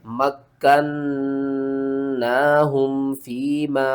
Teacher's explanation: کاف کو ہم نے 2 بار پڑھنا ہے، نون کو 2 بار پڑھنا ہے، اور نون کے اوپر ہم نے غنہ کرنا ہے، اور نون کو 1 الف کی مقدار اوپر کی طرف کھینچ کر پڑھنا ہے۔